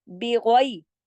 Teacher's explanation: बा को तो बारीक पढ़ेंगे, गैन को मोटा पढ़ेंगे